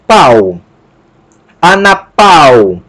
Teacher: observe que o alfa e o y estão formando ditongo e o acento recai sobre a segunda vogal do ditongo